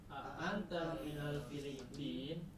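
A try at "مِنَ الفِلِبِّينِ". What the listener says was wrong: Nah, tidak boleh Filipin. Ini nun harokatnya apa? Filipin, ya-nya mati, nunnya mati. Nah, itu tidak boleh. Harus jelas ya. Kalau dalam percakapan silahkan disukunkan, tapi kalau lagi belajar teori harus jelas. Filipini, Filipinu, Filipina.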